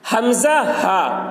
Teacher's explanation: حمزہ، ہا ان دونوں کا مخرج حلق کا آخری حصہ ہے جو سینہ کی طرف ہے، جو سینہ کی طرف ہے نا، یہ حلق جو ہے گلا سے لے کر نیچے سینے کی طرف ہے، جو سینے کی طرف ہے اس حلق سے حمزہ اور ہا یہ ادا ہوتا ہے۔